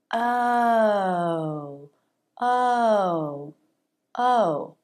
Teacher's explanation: the lips round more for the second sound oh · the jaw drops more for the first sound oh and less for the second sound the lips round more for the second sound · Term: lip rounding